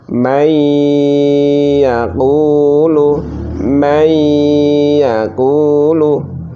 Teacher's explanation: Karena nun sukun bertemu ya, maka harus dimasukkan, diidghamkan. Diidghamkan dengan cara mendengung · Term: idgham bi gunnah